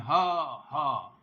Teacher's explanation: हा शुद्ध काकल्य ध्वनि है, हा हा, ये बिल्कुल कंठ के मूल से बोली जा रही है